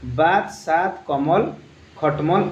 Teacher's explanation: अंत में अ वाले शब्द का हलंत उच्चारण होता है